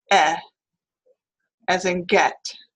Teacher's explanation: to be a midf front vowel and it is also unrounded the lips are not rounded at all and it is considered a LAX vowel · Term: mid-front vowel